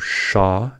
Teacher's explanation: the sides of the tongue touch the sides of the upper teeth the tip of the tongue does not touch anything the blade of the tongue is concave making the tongue look